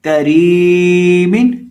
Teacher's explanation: काफ को बारीक पढ़ेंगे और रॉ को भी बारीक पढ़ेंगे। क्यों? क्योंकि रॉ के नीचे जेर है और रॉ को हम यहाँ लंबा करके पढ़ेंगे।